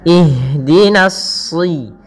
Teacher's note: kemudian menyempurnakan kasrah daripada huruf di jangan sampai dia ihdina ihdinasi Kemudian pada lafal na ini usahakan nanya tipis